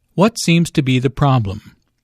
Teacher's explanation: Notice that the intonation falls at the end of the question.